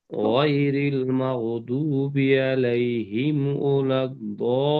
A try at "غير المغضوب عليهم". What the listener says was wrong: মাশাআল্লাহ, মাগজু টান হবে, মাগজুবি। আরেকবার পড়েন, গয়রিল মাগজুবি।